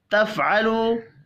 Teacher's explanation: تفعلوا فا ساکن ہے، قلقلہ نہیں کریں گے. واو مدہ کو ایک الف کے برابر کھینچ کر پڑھیں گے